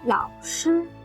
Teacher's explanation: You should hear the distinct third tone drop on 老.